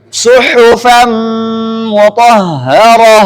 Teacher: Nun kedua punya dengung. Nun pertama ketika masuk ke mim, nunnya ada dengungnya. Mimnya juga ada dengungnya, maka enggak bisa dihilangkan dengungnya ini. Nah, cuma harus dipanjangkan tetap sama dua harakat.